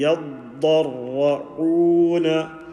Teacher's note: Ya empty mouth, dad and ra, full mouth.